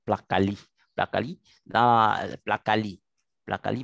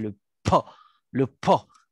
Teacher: le P n'est pas soupiré comme peut-être les Anglais, les British le feront